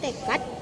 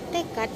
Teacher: Fonem bahasa Indonesia D dalam posisi akhir kata yang diucapkan T.